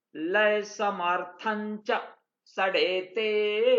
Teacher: समर्थम को यहां समर्थन च पढ़ना चाहिए क्योंकि च छ ज झ ञ तो पंचम वर्ण के साथ इसका उच्चारण होगा